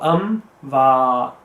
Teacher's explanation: remember to prolong the va because it's huruf madda